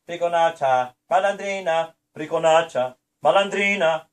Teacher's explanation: it's emphasizing the penultimate vowel, right? Because that's usually, unless it's indicated in Italian, that's going to be the vowel that's emphasized.